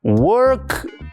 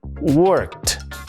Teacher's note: Que la ed que se pone al final del verbo se la tiene que pronunciar como una letra T. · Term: voiceless sounds